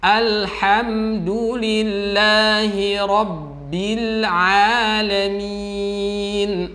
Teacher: Padahal di situ adalah ha-nya lembut ya, ha sifatnya hamas dirasakan sampai ada udara yang keluar lembut. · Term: sifat hamas